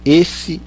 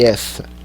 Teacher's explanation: Esse tem E fechado, minúsculo. Essa tem E aberto, maiúsculo, tá?